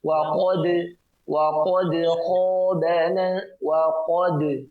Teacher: Yang tebal di situ ada huruf qaf, sementara huruf dal memiliki sifat tipis.